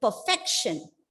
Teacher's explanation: Yes, 3 syllables. 1, 2, 3. Stress on the second syllable. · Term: penultimate syllable